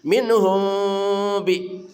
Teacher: Minh ya minhum billahi. Mim mati bertemu ba namanya ikhfa syafawi. Mimnya dibaca samar dan dengung. Kedua mulut dibuka sedikit ada celah udara.